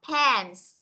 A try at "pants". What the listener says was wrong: Âm sờ đâu, cô vừa nhắc xong.